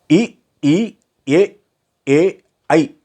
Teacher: அன்முதல் அன்பல் முதல்னா விளிம்புற வருமே அன்பல்னா நாவின் விளிம்பால் அணுகப்படும் பல் அதாவது இ ஈ ஏ ஐ என்ற ஐந்தும் வாயைத் திறத்தலுடன் மேல்வாய் பல்லை அடிநாக்கின் ஓரமானது பொருந்த பிறக்கும்